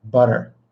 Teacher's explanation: those are T's, but they're said super fast and super lightly. So it's not butter, it's not but, it's but and butter.